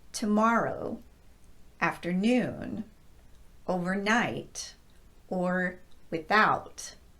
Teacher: I'm still stressing the content portion of the word, which is the second word.